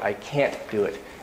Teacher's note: that can't does not reduce so it's always an ah